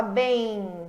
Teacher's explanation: Bem, você não fala M, que é o som do M. Você fala bem, você estende o som do E. É aquele ditongo consonantal, né?